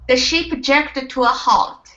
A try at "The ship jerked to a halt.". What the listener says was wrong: Now in between jerked and to, you're saying jerked to. So you want to combine those sounds instead of saying jerked. Okay. It's jerked to.